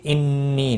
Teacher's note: نون مشدد پر غنہ ہوگا، یا مدہ بھی ہے، 1 الف کے برابر کھینچ کر پڑھیں گے۔